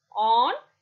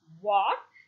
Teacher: Thus, A can be described as a back open rounded vowel.